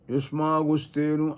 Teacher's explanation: యుష్మాగుస్తేను అనే స్థలంలో కూడా ఆ అనుస్వార గకారంతో కూడి ఉచ్చరింపబడటం యుష్మాగుస్తేను అని మనం అనటం ఇదంతా కూడా జరుగుతున్నటువంటి విషయం ఇది మూడో రకం